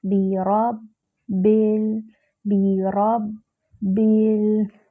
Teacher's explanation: لام ساکن ہے، لام کو ہلانا نہیں ہے